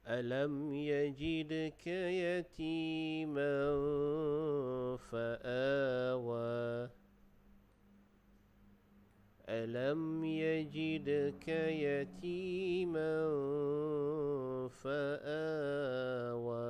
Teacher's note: di atas mim ada sukun, jadi dibaca dengan izhar syafawi. Jadi kita jelaskan bunyi mim tersebut.